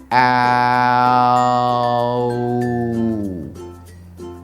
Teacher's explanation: Start by saying the first vowel sound, ah, and sliding it to the next sound, oo. · first sound in the owl diphthong is a as in hat the second sound is one we just talked about a minute ago ooh as in moon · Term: ow diphthong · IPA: /aʊ/